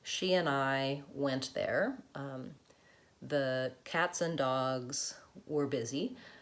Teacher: So we often, when we're talking in fluent speech, will often say an for the word and that's a reduction that we make. So if I'm saying she and I went there, the cats and dogs were busy.